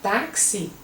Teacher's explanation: Quando você fala táxi, você tem táxi como se fosse o X, uma letra C e um S. Então você tem T-A-X-I, que são 4 letras, na hora de falar os fonemas vai ser diferente, você vai falar que são 5 fonemas, porque o CS, o X com valor de CS, você conta como 2.